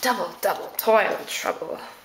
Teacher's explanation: we have our stressed unstressed stressed unstressed